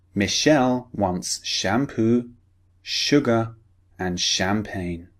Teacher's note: We're focusing on sh. Remember the unvoiced sound.